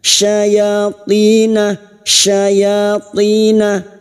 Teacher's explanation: huruf shin tafasi Makhrajnya ada pada wastul lisan sama dengan jim dan ya